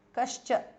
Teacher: Visarga changes to Shu there. Cha, Kascha because of Sandhi.